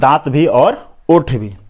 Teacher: व का उच्चारण स्थान क्या है, तो दंतोष्ठ, यहाँ दांत भी और ओठ भी। अब आते हैं नासिका, जहाँ पे नाक का इशारा हो उसे क्या कहेंगे, नासिका वर्ण कहेंगे, जैसे अंग य ड़ न म, और इसका नाम क्या है, तो नासिक वर्ण। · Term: दंतोष्ठीय वर्ण